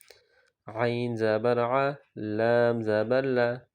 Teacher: زبان کا کنارہ جب اوپر کے دانتوں کے مسوڑے سے لگے تو لام نکلتا ہے، یعنی لام اس سے ادا ہوتا ہے۔